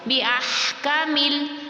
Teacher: آگے لام ساکن تھا تو وہ اپنے سے پچھلے والے حرف سے مل کر پڑھا جائے گا